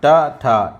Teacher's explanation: टा ठा ये मूर्धन्य है, मूर्धा है